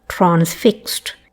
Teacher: Today, transfixed is what you'd find in dictionary transcriptions, but for Her Majesty it is transfixed, the broad back vowel.